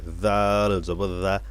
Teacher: জাল বললে কিন্তু ভুল হবে মাখরাজের থেকে সহি হবে না জাল জিহ্বার আগা সামনের দাঁতের আগা উপরের দাঁতের আগার সাথে লাগবে